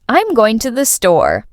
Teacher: For example, in the sentence, I'm going to the store, the stress is on going and store. The words I'm to and the are said more quickly and lightly.